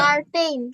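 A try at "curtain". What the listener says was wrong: নট কার, খার, এটা হবে খারটেন। খারটেন, খারটেন।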